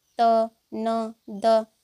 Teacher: त, न, द ये सभी को दंत के माध्यम से बोला जाता है। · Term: दंत्य